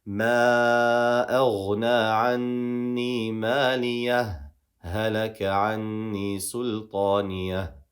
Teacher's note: So I showed the ha, I paused less than the duration of a breath, and then I continued. Or I could just perform idgham and just combine these and not do a sect at all.